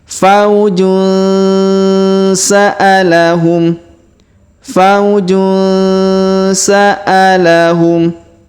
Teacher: dengan huruf sa maka kita dengungkan dan kita samarkan kita dengungkan dua sampai tiga harakat